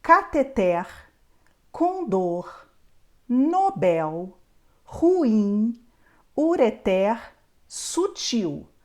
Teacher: Essas palavras são Obrigatoriamente oxítonas Ou seja a última sílaba é a mais forte